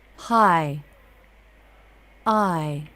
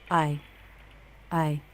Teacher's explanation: Jaw drops with the front of the tongue down, then the jaw lifts as the front of the tongue arches towards the roof of the mouth. In a stressed syllable, the I diphthong curves up, then down.